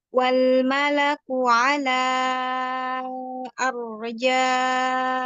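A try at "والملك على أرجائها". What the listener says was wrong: Jangan digabungkan kedua bibir. Ingat fokus pada ujung lidahnya. Coba dimonyongin bibirnya. Fokus aja sama ujung lidahnya. Karena tanpa bantuan bibir pun bisa tebal ya, karena ya memang makhrajnya makhraj lidah dia.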